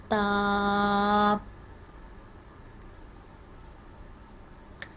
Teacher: जब हमारी ज़ुबान की नोक ऊपर वाले दो दांतों की जड़ से लगेगी तो ता अदा होगा। ता को भी हम एक अलिफ के बराबर लंबा करते हैं, ता।